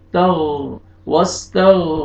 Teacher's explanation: غین کو موٹا کر کے پڑھیں گے